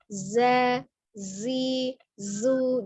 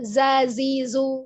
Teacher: Dan sifat khusus yang dimiliki oleh huruf zai yang tidak memiliki lawan adalah as-safir, sama dengan huruf sin dan slod ya, artinya desis. Maka ada suara desisnya ketika mengucapkan huruf zai